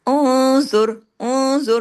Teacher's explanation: उन्जुर, उन्जुर, नून साकिन के बाद ज़ा है ना, तो यहाँ पे इख्फा हकीकी गुन्ना कामिला, लेकिन इख्फा भी हैवी, ओ आवाज में हैवीपन, ज़ा को हैवी, आगे रा उसके पेश के असर की वजह से रा भी ओ जोर, ये भी हैवी हो जाएगा।